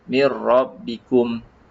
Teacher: Jangan kita menipiskan mir rabbikum. Huruf ra disebut ra, huruf yang tebal dan ada getaran.